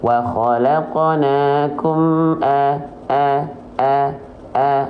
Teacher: e fathahnya enggak sempurna cuman walaqnaakum a a a a nah ini jadinya seperti orang yang sedang bergumam kurang jelas harakat fathahnya